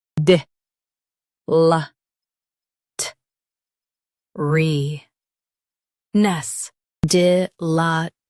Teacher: Stress LA and keep T light.